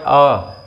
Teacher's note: ये पश्च स्वर है यानी कि जीभ के पिछले हिस्से से बोला जाता है। आ, आप बोल के देखो पीछे से आती है आवाज आ।